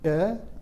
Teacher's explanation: The second vowel has a strictly rising tone, E, almost as if you're asking a question.